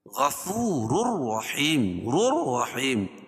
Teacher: ادغام تو کریں گے لیکن غنہ نہیں کریں گے۔ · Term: ادغام بلا غنہ